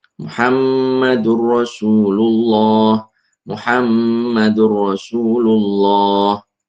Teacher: Cara membacanya dileburkan nun sukun ke huruf lam atau ro setelahnya tanpa disertai dengung. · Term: Idgham bihairi ghunah